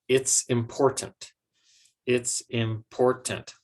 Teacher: And that's because the word important is stressed on the second syllable. And the word it's is not a very important word.